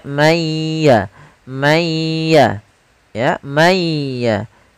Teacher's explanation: Contoh, misalkan ada nun sukun bertemu dengan huruf ya, maka nunnya dimasukkan kepada huruf ya, tidak lagi dibaca man yasha'u, akan tetapi suara nunnya dihilangkan sebagian, tapi masih menyisakan sedikit huruf nunnya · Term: idgham bi gunnah